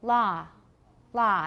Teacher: They don't have so much rounding, it's more like ah.